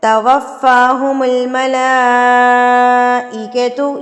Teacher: بڑی مد اور آپ نے اس کو 4 حرکات کے برابر کھینچ کے پڑھنا ہے. اپنے ہاتھ کی 4 انگلیوں کو بند کر لیں، پھر ایک ایک کو کھولتے جائیں اور ملا کو پڑھتے جائیں. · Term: مد متصل